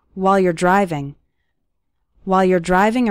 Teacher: we have the word while becoming wall and you're becoming your while you're driving while you're driving or exercising often when the